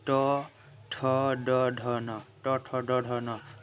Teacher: दोस्तों जीभ का जो नोक है वो जाके तालू में सटता है दोस्तों। तो ये हुआ मूर्धन्य व्यंजन।